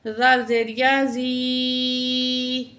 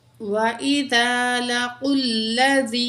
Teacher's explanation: या साकिन इससे पहले ज़ेर है, या मद है, ये वन काउंट खींच के पढ़ेंगे या को